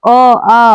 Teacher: तो अ आ और अ इसको कंठ स्वर कहते हैं। यह स्वर कंठ से बोले जाते हैं। इसीलिए इसे कंठ स्वर कहते हैं।